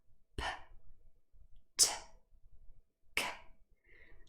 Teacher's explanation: So this little puff of air accompanies the release of these three stops or plosives. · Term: aspirated